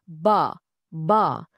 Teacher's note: Untuk huruf ba, bunyinya datang dari bibir. Rapatkan kedua-dua bibir, kemudian lepaskan.